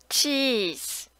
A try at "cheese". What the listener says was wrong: Okay, this one is Z, okay? So still that's S. It sounds like cheese. It should be Z. Cheese. Can you say Z? So you have a problem with this sound.